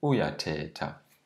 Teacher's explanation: we would have to raise the tone at the beginning. Instead of saying uyatheta, it would be uyatheta.